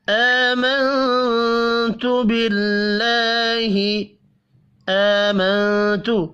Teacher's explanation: حمزہ کے اوپر کھڑی زبر ہے، ایک الف کے برابر کھینچ کر پڑھنا ہے۔ منت نون ساکن کے بعد حروف اخفا میں سے ایک حرف تا ہے، اخفا حقیقی ہوگا۔